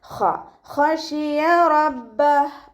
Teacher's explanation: ഖ ഇസ്തിഅലാൻ്റെ ലെറ്ററാണ്, അപ്പോൾ നല്ലോണം തഫ്ഖീം ചെയ്തിട്ട് ഉച്ചരിക്കുക.